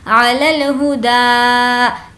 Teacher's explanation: کانا علی الہدا، ہا کی آواز اندر سے حلق میں سے نہیں آئے گی کیونکہ یہ چھوٹی ہا ہے. علی الہدا، دا کو کھینچیں گے کیونکہ یہاں پر الف کھڑا زبر ہے